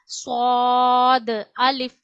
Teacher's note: स्वाद अलिफ स्वाद भी मोटा पढ़ना है। और ऊपर और नीचे के दांत जहां मिलते हैं किनारों पे जबान लगानी है और मोटा करके पढ़ना है।